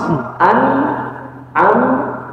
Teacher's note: ketika Nun mim sukun jangan digerakin jangan dilepas